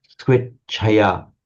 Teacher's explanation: this ch is of itself two sounds. It's the beginning part of a t followed by a sh sound. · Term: ch sound